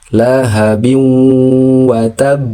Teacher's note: Namun dia dibaca lahabi watab. ditahan sedikit karena dia bertasydid kemudian baru diqqalqalahkan atau dipantulkan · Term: qalqalah kubra